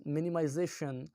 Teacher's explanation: the second last penultimate syllable is prominent as greater amount of energy is applied to it, as it is louder and longer than the rest of the syllables in the word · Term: Stress